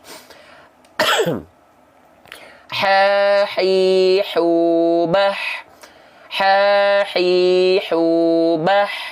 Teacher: ha kecil keluar dari bagian tengah tenggorokan, nafasnya berbisik.